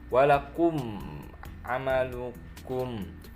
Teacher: mim sukun bertemu dengan ain itu hukumnya izhar syafawi